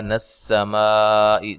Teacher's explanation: سین کو باریک سیٹی سے، میم پہ مد واجب